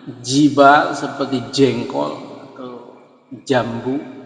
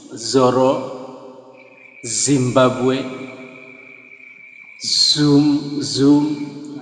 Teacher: Nah, ini adalah lawan atau kebalikan dari jim. Kalau jim itu tanpa angin, jibal seperti jengkol atau jambu. Tapi kalau Z itu zal namanya, itu full angin.